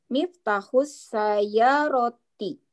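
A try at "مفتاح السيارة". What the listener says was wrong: Oke, ahsanti, barakallahu fiik, masya Allah.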